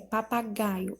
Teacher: a sílaba tônica é o gá e ela é uma paroxítona